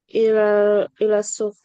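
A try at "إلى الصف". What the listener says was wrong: ila saf bukan suf ya saf nah.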